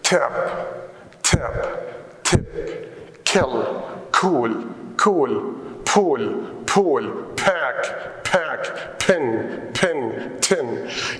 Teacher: they are produced or articulated with a strong puff of air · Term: aspirated